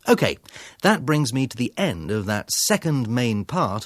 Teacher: The speaker has reached the end of section 2 of his talk. His intonation falls, the pitch and music of his voice get lower, and he gets quieter before he introduces the next section. His intonation then rises again.